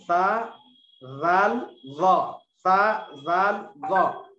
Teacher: नोके जुबान और ऊपर के दरमियानी दांतों के किनारे से 3 हुर्फ निकलते हैं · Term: चौदहवां मखरज